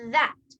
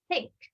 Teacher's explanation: when we say that your tongue is vibrating and when we say think it is not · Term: voiced and voiceless th